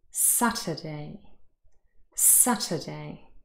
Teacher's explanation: it is the first one the first syllable is stressed here is the phonemic transcript you can see the little apostrophe